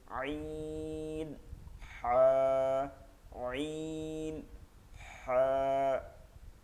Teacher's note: দুই নাম্বার মাখরাজ হলকের মধ্যখান হইতে আইন হা